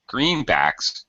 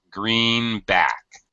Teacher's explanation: a compound or a set phrase drops like a stair step, high, low